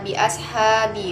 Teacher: Kedua pada kata bi ashabi, hukum bacaannya mat tabi'i karena ada fathah diikuti oleh alif dan dibaca sepanjang 2 harokat